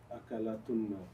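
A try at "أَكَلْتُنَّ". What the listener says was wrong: Get rid of the last haraka. Make it a sukoon. Akal. Akal tunna.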